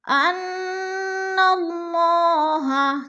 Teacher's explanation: علم تر ان اللہ، انا کی نون جو ہے مشدد ہے، سختی سے جما کر پڑھیں گے اور غنہ کریں گے، اور نون کو جب لام کے ساتھ ملائیں گے تو اللہ پر پڑھا جائے گا، کیونکہ اللہ سے پہلے لفظ نون کے اوپر زبر ہے تو ہم اللہ کو پر کر کے پڑھیں گے